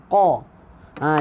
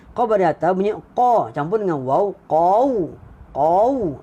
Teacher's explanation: Qaf ni tebal. Bunyi qaf ni tebal. Muncung mulut sebutnya, muncung mulut sikit.